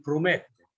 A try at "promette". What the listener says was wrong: Noi la pronunciamo la finale, quindi promette.